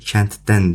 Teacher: D samiti öz kar qarşılığına t-ya çevrilir.